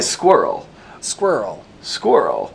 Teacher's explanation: I say squirrel squirrel squirrel that kind of Blends into one syllable